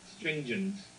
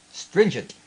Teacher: you've gotta tap the T